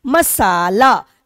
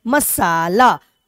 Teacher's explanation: म ला की अपेक्षा सा पे ज्यादा बल दे रहे हैं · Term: बलाघात